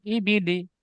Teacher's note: জেরটি হারাকাত হারাকাতের পড়াকে তাড়াতাড়ি পড়তে হবে টান দেওয়া নিষেধ